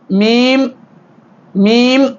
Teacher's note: உதட்டின் வெளிப்பகுதி ஒட்டுவதால் மீம் மீம் வெளியாகும்